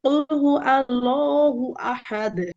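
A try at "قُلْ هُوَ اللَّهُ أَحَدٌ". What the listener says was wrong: আচ্ছা আপু, প্রথমত হচ্ছে কুল হু ওয়াল্লাহু, এখানে কুল হু আল্লাহু হয়েছে হ্যাঁ, ওয়াল্লাহু ওয়াও।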